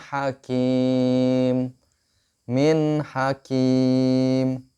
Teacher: Kita lihat di situ huruf nunnya terbaca jelas, tidak dengung. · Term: idhar